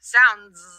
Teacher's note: When we say sounds, even though it's spelled with an S, we say the Z sound